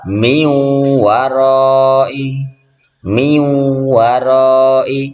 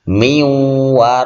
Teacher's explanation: Suara nun matinya enggak jelas karena dileburkan, enggak nampak, dan didengungkan. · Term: idgham bi gunnah